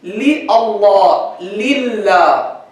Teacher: The first lam is li. Li, always light, always, no discussion about it.